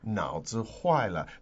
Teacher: 脑, third tone. 子, neutral tone. 坏, fourth, 了, neutral. So altogether, 脑子坏了.